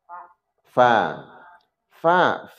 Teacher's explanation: Fa itu gigi nyentuh bibir bawah